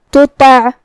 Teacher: تا اور طا کی ادائیگی ایک ہی جگہ سے ہے اور وہ ہے زبان کی نوک اور اوپر کے دانتوں کے جڑ سے، لیکن تا حروف الترقیق میں سے ہے تو ہم تا کو پتلی آواز میں پڑھیں گے اور طا حروف التفخیم میں سے ہے تو طا کو موٹی آواز میں پڑھیں گے.